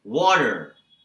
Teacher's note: Americans will not use the letter T or they will not pronounce it if it comes in the middle of a sentence it becomes a D